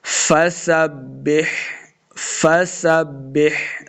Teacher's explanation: سین پہ سیٹی کی آواز آئے گی ، با کے سامنے لانا ہے، فسبح، یہ آگے ہا کا